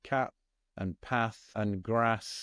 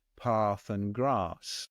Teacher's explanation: I come from the middle of England, so I don't speak like the Queen would have spoken, and so my vowel sounds are very flat. I would say cat and path and grass, and that isn't how the Queen and her ilk would speak down there in London, where it would be path and grass.